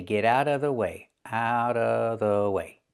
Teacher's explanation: Get out of Get out of out of The T in out changes to a fast D because it's between vowels. And what about the v sound in of? Well, you don't have to make that sound and most people don't.